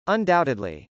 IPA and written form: əndˈɑʊtɪdli (undoubtedly)